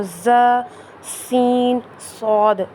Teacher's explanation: زبان کی نوک جب نیچے والے دانتوں سے لگتی ہے تو ز، سین، صاد ادا ہوتے ہیں